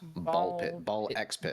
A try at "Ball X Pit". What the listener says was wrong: The X is silent, like Hunter x Hunter.